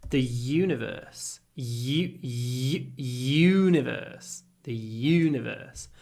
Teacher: you need lots of Y at the beginning then you can do your u · the stress is on the U